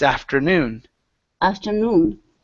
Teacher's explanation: The stress is on the end of the word.